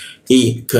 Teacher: lidahnya kita turunkan sehingga ada hembusan udara ketika membaca ka